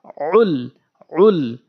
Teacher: জবর লাম আইন লাম পেশ উল সঠিক ভাবে উচ্চারণ করতে হবে আইন কোথায় থেকে উচ্চারণ হয় জিহ্বার জিহ্বার হলকের মাঝখান থেকে আইন উচ্চারণ হয়